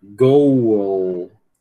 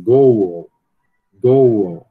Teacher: Para a gente realizar o som do L no final, você tem que obrigatoriamente passar pelo som do schwa.